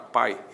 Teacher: na palavra pai existe um ditongo, o A é vogal, o I é semivogal, o ditongo decrescente.